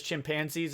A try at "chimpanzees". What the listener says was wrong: how are you pronouncing that? Chimpanzee? Chimpanzee. stressing the wrong syllable.